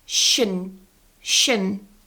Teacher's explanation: a lot of learners say tion or tion or something with a very strong vowel there like eon, but it's just a schwa.